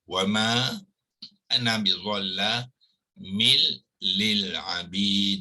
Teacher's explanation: ma dengan ana ni adalah mad jaiz munfasil ya, mad jaiz munfasil, jadi dia dibaca sepanjang 4 harakat